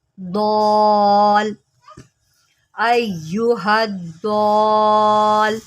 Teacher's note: ضاد کو لام کے ساتھ ملانا ہے لیکن لمبا کرتے ہوئے کیونکہ اس کے اوپر مد ہے